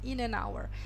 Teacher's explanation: Запомните, что слово час – hour – произносится без H. То есть H – он здесь silent letter.